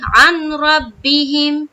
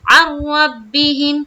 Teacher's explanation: قاعدے کے مطابق نون کو نہیں پڑھنا ہے، نون کو اسکپ کریں گے، عین کو را سے ملائیں گے۔ عین را زبر عر، را با زبر رب، با زر بی، حامیم زر ہم، عن ربہم۔ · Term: ادغام کا قاعدہ